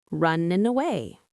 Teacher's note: the N sound is so strong that it usually eats the next word. Run away sounds like runnin' away.